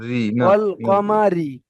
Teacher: হ্যাঁ, তো এখানে মুখ গোল হবে না, তাহলে এটা বারিক হয়ে যাচ্ছে। রয়ের নিচে জের আছে, রটা বারিক হবে।